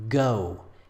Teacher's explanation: in English we produce this sound by raising the back of the tongue and making full contact with the velum the velar region